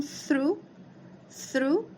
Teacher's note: a língua entre os dentes soltando aí um um ventinho que é a mesma coisa que acontece quando a gente fala o número três em inglês